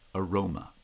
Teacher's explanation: ma or ma becomes reduced to schwa because it's unstressed roma the pre-foot syllable the the letter a in spelling is also pronounced as a schwa because of vowel reduction